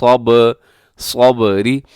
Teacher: सब्र में बा कलकला है, बा साकिन है तो कलकला होगा। कलकले का मतलब होता है आवाज़ डबल होगी